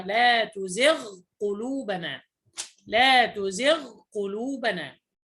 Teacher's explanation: وأيضا الغين مع القاف في لا تزغ قلوبنا، لا تدغم الغين في القاف إنما أظهرها